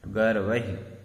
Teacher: वह में ऐ की मात्रा भी है, र की रेफ का भी उच्चारण करना है और विसर्ग का भी उच्चारण करना है